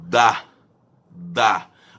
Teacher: A língua encosta o pezinho do dente. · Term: linguodentais